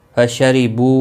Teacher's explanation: بو واو مدہ ہے، ایک الف کے برابر کھینچ کر پڑھیں گے